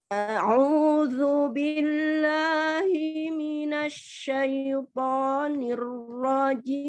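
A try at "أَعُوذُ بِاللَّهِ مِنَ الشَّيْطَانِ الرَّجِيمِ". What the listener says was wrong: Minasya, tampakkan tafasi di huruf shin ya. A'udzu billahi minasyaitonir rajim.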